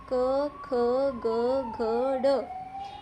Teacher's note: यह जो आवाज है वह सीधा गले से आ रही है। कंठ से आ रही है। इसको बोलते टाइम जीभ मुंह के किसी भाग को टच नहीं कर रही। · जब आप बोलोगे तो आपको पता लगेगा कि ये जो आवाज़ है वो सीधा गले से आ रही है, कंठ से आ रही है। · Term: कंठ्य वर्ण